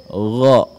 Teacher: Huruf ghain ketika diucapkan nafas tidak dialirkan